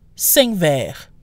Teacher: depending on the speaker or the particular word that follows, you might occasionally hear the Q dropped.